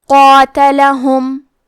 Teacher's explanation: ہم قاف کو اور مد الف کو دونوں کو موٹی آواز میں ادا کریں گے